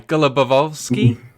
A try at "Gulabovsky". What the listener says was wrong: You were fine, but you double pronounced the first. So it's just Gulabovsky.